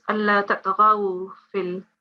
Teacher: It's not za, it's gha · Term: ghain